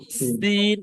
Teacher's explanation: এটা সিটির মতো আওয়াজ হয়, একটু দন্তের স উচ্চারণ হয়